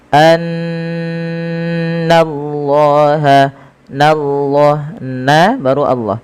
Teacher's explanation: Setiap kita mendapati adanya nun berharakat tasydid, kita tahan dulu suara bunyinya sepanjang 2 harakat karena ia kita namakan dengan bacaan gunnah. Kemudian lafal Allah bila didahului dengan fathah maka dia ditebalkan, tapi nanya tetap tipis